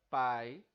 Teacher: a palavra pai né dito assim de forma inteiriça com apenas uma emissão de ar caracteriza um ditongo · na palavra pai, o A é muito mais forte do que o I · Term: ditongo decrescente